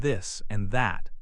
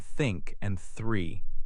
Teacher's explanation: One th sound is voiced like in this and that. The other th sound is voiceless like in think and three.